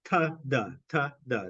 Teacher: Anyway, so the alveolar sounds are made with your tongue pointing towards or touching your alveolar ridge. So in the case of ta and da, your tongue is touching your alveolar ridge.